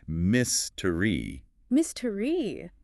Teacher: The stress is heard on the 1st syllable.